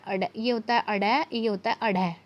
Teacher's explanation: तो अड़ और अढ़ जो होता है ये उत्क्षेपित वर्ण होते हैं। इनका जो उच्चारण स्थान है वो कहाँ से होता है? मूर्धन्य से होता है।